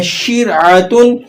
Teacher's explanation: را ساکن ہے لیکن شین کے نیچے زیر لگی ہوئی ہے تو آپ نے اس را کو باریک کر کے ادا کرنا ہے